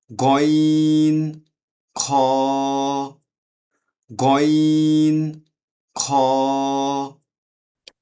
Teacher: কন্ঠনালী শেষ থেকে উচ্চারিত হয়